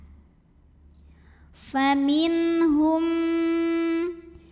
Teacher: nun sukun ini kita bunyikan dengan jelas bunyi n tidak ditahan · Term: izhar halqi